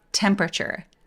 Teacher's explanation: 여기 모음이 몇 개냐면 E, E, A, U, E 이렇게 다섯 개이긴 한데 단어 맨 끝에 오는 이들은 우리가 발음을 안 하니까 걔는 그냥 무시할게요. 그래서 temperature라고 읽기 딱 좋은데 A를 날려서 소리 내볼게요. 강세는 이음절에 오니까요.